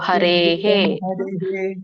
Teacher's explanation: ಎ ಸ್ವರ ಕೂಡಿದೆ ಹಾಗಾಗಿ ಅದರಿಂದ ಅಲ್ಲಿ ಬರುವಂತ ವಿಸರ್ಗ ಕೂಡ ಎ ಅಂತಾನೆ ಉಚ್ಚಾರಣೆ ಆಗುತ್ತೆ